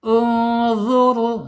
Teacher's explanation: ditebalkan karena sebelum ro sukunnya harakat domah